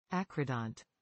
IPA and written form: ˈækrəˌdɒnt (acrodont)